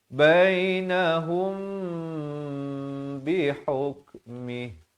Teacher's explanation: mim mati bertemu ba. Hukumnya ikhfa syafawi kena panjang mim mati bertemu ba. Tuan-tuan dan puan-puan lihat di sini mimnya kosong tidak bertanda, datang ba kena bacakan dengan 2 harakat.